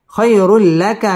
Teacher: ইদগামে বেলা গুন্না ছাড়া পড়তে হবে খায়রুল লাকা মিনাল উ মধ্যে তবাই এক আলিফ টেনে পড়তে হবে